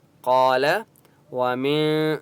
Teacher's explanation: اماما قال ومن ذریتی قاف الف مدہ ہے، قاف کو 1 الف کی مقدار کھینچ کر پڑھیں گے اور قاف کو موٹا پڑھیں گے۔